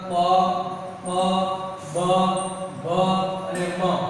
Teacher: ઓષ્ઠ વ્યંજન એટલે કે હોઠ બંધ કરીને જે બોલાવતો હોય તેને ઓષ્ઠ વ્યંજન કહેવાય